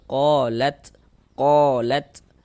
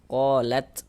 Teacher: Karena huruf ta ini dia salah satu huruf yang memiliki sifat ahmas. Jadi ketika kita mengucapkannya ada nafas yang mengalir.